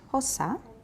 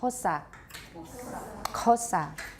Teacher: hosa is pronounced with a lateral click plus aspiration